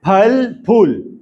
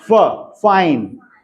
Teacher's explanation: जो हिंदी वाला है वो, उसमें दोनों लिप्स इस्तेमाल होते हैं। फल इट इज बाइलेबियल, मतलब दोनों लिप्स इस्तेमाल हो रहे हैं, और इंग्लिश वाले में इट इज लेबियोडेंटल।